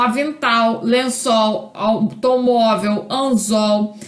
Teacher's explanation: o segmento final, né, pós-vocálico, em todas essas palavras é pronunciado com a letra, com a vogal U